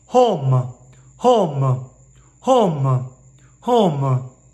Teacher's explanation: you don't make it like an English O, because there's what's called at the end of it a diphthong. If you don't know what that is, a diphthong means that there's a little bit of a turn, a vowel mutation at the end of the biggest part of the vowel.